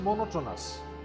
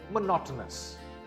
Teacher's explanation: The second syllable is stressed.